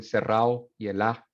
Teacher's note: The intervocalic D is removed.